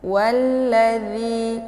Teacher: ini dibaca panjang 2 harokah jadi makharijul huruf Za ini tepatnya posisi ujung lidah bertemu dengan ujung gigi bagian depan yang di atas